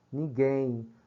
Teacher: Você escuta o som do U, do E, e esse M se transforma na sonoridade de um I. Só que um I átono, certo? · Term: ditongos nasais decrescentes